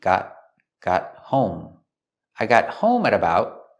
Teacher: We see the T in got is a stop T.